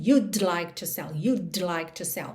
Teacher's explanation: Até porque eu encosto a língua no céu da boca para fazer o D, you'd, mas eu já tô com a língua no céu da boca para o L, you'd like, you'd like. Então, é muito comum que você praticamente não ouça esse D do would contraído